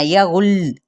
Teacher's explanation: دیکھیں تشدید ہے نا، تو یغل فوراً نہیں پڑھنا، یغل، کیونکہ لام پہ تھوڑی دیر ہلکا سا ٹھہرنا ہے ، کیونکہ تشدید ہے نا، پھر جب ہم نے وقف کیا